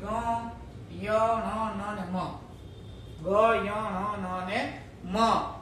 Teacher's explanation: મુખના સિકા, મુખ અને નાસિકા બંને દ્વારા એકી સાથે બોલવામાં આવે કે મોઢા દ્વારા બોલવાનું અને એ વ્યંજનને પાછો નાક દ્વારા પણ બોલવાનો. તો મોઢા અને નાક દ્વારા એકી સાથે જેને બોલીએ એને કહેવાય અનુનાસિક વ્યંજન